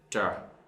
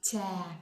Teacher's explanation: Sounds like a ch, right? A little bit like ch. It has the air. It has the coming air.